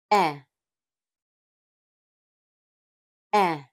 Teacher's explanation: The /e/ sound is made with the tongue at a mid-height position in the front of the mouth, creating a short, pulsed sound.